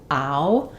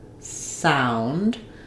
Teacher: In sound, this is a vowel that is made by moving between two positions. So it's kind of like an and an together, ow. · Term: ow diphthong